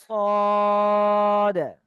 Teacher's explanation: পুর করে পড়তে হবে, মুখটা গোল করে পড়তে হবে